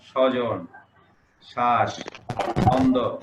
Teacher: শব্দের প্রথমে বফলা থাকলে উচ্চারণে সে বর্ণের উপর অতিরিক্ত ঝোঁক পড়বে, বয়ের উচ্চারণ হয় না।